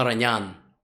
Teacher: the emphasis on the last syllable in Armenian surnames